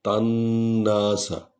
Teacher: نون پر شد ہے اس لیے تا اور نون کو اکٹھے پڑھ رہے ہیں، اور نون کو 2 بار پڑھ رہے ہیں، ایک دفعہ تا کے زبر کے ساتھ پڑھ رہے ہیں اور دوسرا جو ہے نون کے اپنے زبر کے ساتھ پڑھ رہے ہیں۔